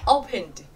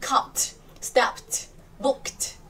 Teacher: Khi thêm ed chúng ta sẽ đọc là d, rất nhẹ, opened. Còn các từ còn lại chúng ta sẽ phải bật mạnh hơn